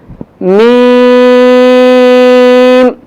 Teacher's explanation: میم کا مخرج دونوں ہونٹوں کی بیرونی تری سے